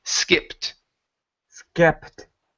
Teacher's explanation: skipped with a short I instead of skeeped